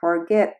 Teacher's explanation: it has two syllables and the last syllable is stressed. That is, when you pronounce it it sounds louder.